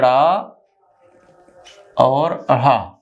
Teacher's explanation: ये उत्क्षिप्त वर्ण, जहां जीभ की नोक छूकर गिर पड़े, वो उत्क्षिप्त होते हैं